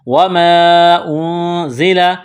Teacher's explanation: نون ساکن کے بعد زا ہے، حروف اخفا ہے، آواز ناک میں چھپائیں گے، غنہ کریں گے